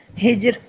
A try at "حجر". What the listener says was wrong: ہجر، زبردست۔ ہجر نہیں ہے، حجر ہے۔